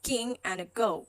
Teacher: These are your velar stop. So airflow being held right behind the velum